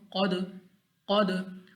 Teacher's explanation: उसके बाद हमारे पास क़ाफ, फिर हमारे पास मुस्ताली में से हमने इसको मोटा पढ़ना है। दाल हमारे पास कलकला में से हमने इसको 2 मरतबा पढ़ना है, यानी हमारे मखरज में जंबश सी हो।